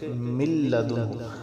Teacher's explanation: اب ہم یہاں پر غنہ نہیں کریں گے، ایسے نہیں پڑھیں گے من لدنہ نہیں پڑھیں گے بلکہ من لدنہ۔ اب نون کو ہم نے لام کے ساتھ ملا دیا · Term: بغیر غنہ کے ادغام